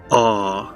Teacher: So this is a back vowel, back and open vowel. It's sort of like the A in father in English.